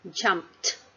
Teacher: So let's make it into past tense by adding suffix ed at the end. So the ed here sounds like t because the word jump ends with the sound of p.